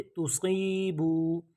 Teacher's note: سی جو پڑھا ہے یہ ایک الف کے برابر ہم نے اس کو لمبا کیا ہے. اور بو یہاں پہ اب دیکھیں واو کے اوپر مد نہیں آئی تو ہم نے پڑھا توسیبو.